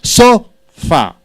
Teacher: So should be stressed 100%, 50% for fa.